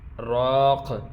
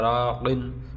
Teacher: یہاں پہ اگر وقف کریں تو راق پڑھیں گے، وقف نہیں کریں تو راقن ، آگے جو بھی لفظ اس کے ساتھ ملا کے پڑھیں